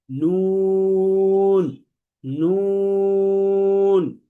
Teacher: নুন হরফটি জিহ্বার যে আগাটা আছে, এই আগাটা তার উপরের তালুর সাথে লাগবে। এই যে দেখেন জিহ্বার আগাটা তার বরাবর এই উপরের যে তালু আছে, উপরের যে তালু, দাঁতের গোড়া না বরং তালু, এই উপরের তালুর সাথে লাগিয়ে উচ্চারণ করতে হয়।